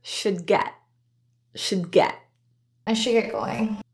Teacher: phrase are linked together with no pause I should get going the D and should is not released since there is another stop consonant right next in the word get